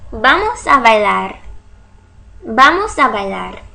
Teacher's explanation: the first B is going to be pronounced as a stop. Why? Because it's the first sound spoken after a pause. It's the first word of the sentence.